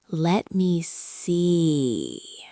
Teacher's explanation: the trick with let me see is the vowel sound. You have to stretch it out. You do not say, let me see, aggressively. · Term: long E sound